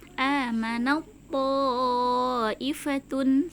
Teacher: Jadi biasanya ta itu kalau sukun kan ada hamznya, amanat, seperti itu. Tapi karena bertemu dengan huruf po yang sama makhrajnya, maka langsung diidghamkan atau langsung dimasukkan ke huruf po-nya